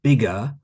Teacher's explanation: in British English we often don't pronounce the r at the end of words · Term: intrusive ER sound